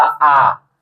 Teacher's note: जैसे अ और आ शब्द का जब उच्चारण करेंगे तो मुख द्वार पूरा खुल जाता है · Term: विवृत स्वर